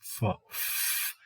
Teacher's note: So from the lips, you can make the f, as in fun. Test it, and the vocal folds are not going to be active. So f is voiceless.